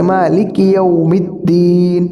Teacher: اور مالک ایسا نہیں، بلکہ مالکی بالکل باریک، اور زیر پڑھنا ہے